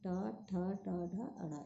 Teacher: मूर्धा मीन्स होता है बेटा बीच में। जैसे टा बोलेंगे तो जीभ जो मुड़ती है वो तालु के जस्ट बीच में लगती है